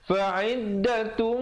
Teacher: dengungkan di situ idgham bi gunnah, tanwin bertemu mim